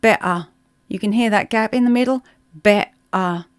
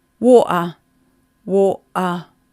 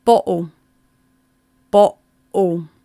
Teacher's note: They have breaks in the middle, and that break in the middle is where our vocal cords close. So better becomes better. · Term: glottal stop